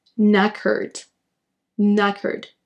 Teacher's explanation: Ne prononcez pas le K en début de mot, faites directement le son N.